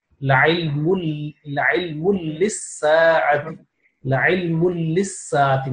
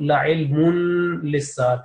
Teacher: No nasal sound, assimilation without nasal sound.